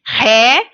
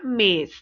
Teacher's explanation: O acento agudo, que dá o som, por exemplo, de Ré, e o acento circunflexo, que dá um som fechado, como na palavra mês.